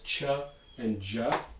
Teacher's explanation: are two affricates cha and ju and we write these as combinations of a stop consonant like ta or da and a fricative consonant like sha or ja